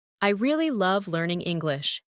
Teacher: Emphasize really and love.